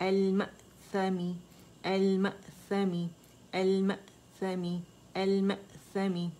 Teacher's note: اس میں آواز کے پٹھے دونوں ایک دوسرے کے قریب آ جائیں گے ساکن کے لیے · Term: حمزہ